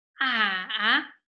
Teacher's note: And third tone, going down and then up.